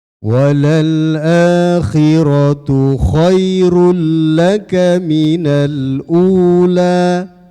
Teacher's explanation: Ini namanya idom bilahna. Masuk tanpa dengung. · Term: idgham bila huna